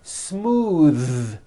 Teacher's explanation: believe it or not the th sound in smooth is voiced